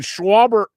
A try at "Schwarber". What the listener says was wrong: you said Schwarber, like Charles Schwab. He's not a financial firm.